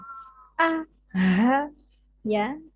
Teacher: Kalau kita praktekkan pasti terasa agak ke dada karena tempatnya di pangkal tenggorokan ya. Tenggorokan yang paling bawah.